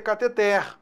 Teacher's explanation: A pronúncia correta é cateter, oxítona.